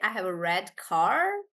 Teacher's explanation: Do you remember I told you that in British English, we don't pronounce the R, and that's why we say, for example, that I have a car, or I have a red car. But in American, you say, I have a red car because you're rolling your R's.